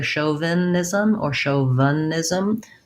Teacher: we have a lax I, or even maybe a schwa